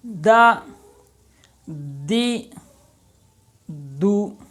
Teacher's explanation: جس کا مخرج یہی ہے کہ زبان کی نوک اوپر والے دانتوں کی جڑ میں لگے، وہ ہے دال